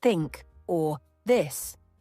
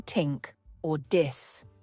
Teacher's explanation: the th sound in words like think or this is often replaced with t or d resulting in Tink or dis pronunciation errors are particularly common because